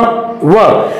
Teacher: ये व एक ऐसी ध्वनि है जिसमें ओष्ठ के साथ दंत का उपयोग भी किया जाता है, इसलिए इसे दंतोष्ठ भी कहा जाता है। दंतोष्ठ का मतलब दंत और ओष्ठ दोनों के सहयोग से उच्चरित होने वाली ध्वनि।